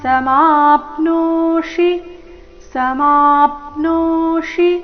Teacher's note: ನೋ ದೀರ್ಘ ಮೂರ್ಧನ್ಯ ಶಿ ರಸ್ವ